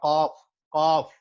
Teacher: قاف جو ہے یہ اس کی آواز جو ہے ہیوینس اور پریشر کے ساتھ آئے گی. اور یہ ہم نے پکچرز ڈسکس کی تھی, اور وہ سیٹ کہ جی the area is closest to the throat and the cough is produced with the heaviness and pressure.